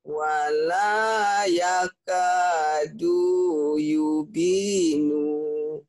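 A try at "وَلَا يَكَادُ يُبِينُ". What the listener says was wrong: Du-nya sama nu-nya pendek. Nu-nya pendek. Yubinu. Karena ini lagi melatih disiplin mana bacaan panjang, mana bacaan pendek. Jadi nggak boleh baca wala yakadu yubino. Nggak boleh. Yubino pendek.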